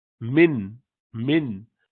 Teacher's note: من، مثال کے طور پہ من، من جب کہتے ہیں تو میم کے بعد نون کے لیے زبان کی نوک اوپر لگتی ہے نا، تالو پر، سخت والے حصے میں، آگے کے دانتوں کے پیچھے